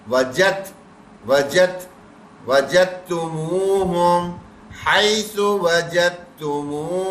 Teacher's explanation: یہاں پہ بھی دال کے ساتھ تا ہے، دال کی آواز نہیں آئی. وجد، وجد، وجد نہیں پڑھیں گے بلکہ تا سے جڑ جائیں گے